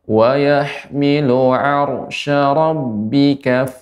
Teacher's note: Ini ra-nya tebal, ya, ra sukun sebelumnya fathah, maka dibaca dengan tebal